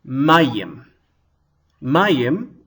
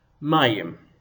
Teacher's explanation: it's really only one syllable a long complicated syllable